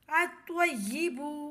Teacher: حمزہ طوا زبر ات، طوا یا زبر طوی، الطوی، یا زیر ی، با پیش بو، الطیب۔ لام خاموش رہے گا، الف کو طوا سے ملائیں گے